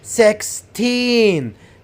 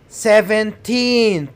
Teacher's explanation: you have to put the stress on the second syllable, which is teen, and make this syllable longer and louder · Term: stress on teen